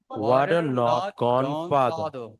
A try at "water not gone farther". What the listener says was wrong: I'm hearing a little bit, maybe the tongue needs to go further to the back. The sound has to come a little further back. I hear something more in the middle, like father, and more I need more in the back.